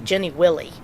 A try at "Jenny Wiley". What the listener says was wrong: I know, but it isn't. There's one L, Wiley, Wiley. If there were two L's, it'd be Willie.